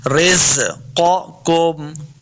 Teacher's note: قاف 2 نقطوں والا ہے، اس کو موٹا پڑھنا ہے، قاف حروف مستعلیہ سے ہے۔